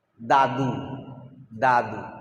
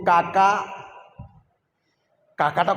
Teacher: দাদুটা তো সামনের থেকে উচ্চারণ হলো দাদু, কিন্তু কাকা হুলকুমির দিক থেকে চলে যাচ্ছে